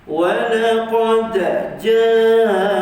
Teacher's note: Kemudian dal kita qalqalahkan, jangan lupa, jangan segan-segan.